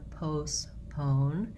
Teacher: So the O is a diphthong in English, meaning we glide from a tense, rounded O, then we relax the jaw and close, and our tongue gets more lax as we finish